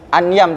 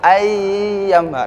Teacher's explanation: ai ini non sukun bertemu dengan huruf ya, idgham bi gunnah. Jadi ai enggak boleh anyam tapi langsung masuk ayam.